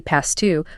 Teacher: The T might even drop slightly, linking the s to the t